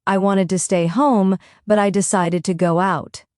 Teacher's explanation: Notice how wanted and decided stand out. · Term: contrast in rhythm